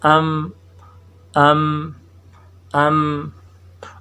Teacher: با کی ادائیگی میں زبان ہونٹوں کا تر حصہ آپس میں مل جاتا ہے اور میم کی ادائیگی میں زبان کا جو ہونٹوں کا خشک حصہ آپس میں مل کر جو ہے میم ادا ہوتا ہے